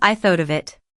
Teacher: But in fast connected speech, it becomes, "I thought of it." You barely hear the separate T and V sounds. The T flaps and blends into the vowel sound of the next word. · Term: flapped t, flapped T